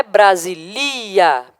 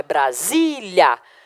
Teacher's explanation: a sílaba tônica é a penúltima, é paroxítona